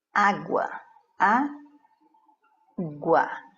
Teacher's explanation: Mas você pode ter uma palavra paroxítona, né? Então, é quando nós vamos ter a sílaba tônica em penúltima posição